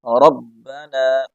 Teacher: با کے شد کو ظاہر کریں گے، را کو موٹا پڑھیں گے